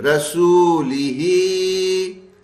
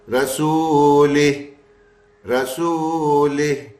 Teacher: زیر والی ہر حرکت ساکن ہو جائے گی